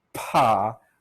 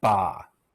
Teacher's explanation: a little puff of air paw versus ba there's not much puff there for ba